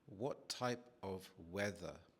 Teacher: Notice how I say what. I stop the T sound from coming out of my mouth. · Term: drop the T